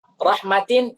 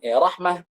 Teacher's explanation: Liddalalati ala ta'nithiha takunu fil wasli ta'an, ketika wasal itu dibaca ta, wa fil waqfi ha'an sakinah, ketika waqaf dibaca ha' sakin.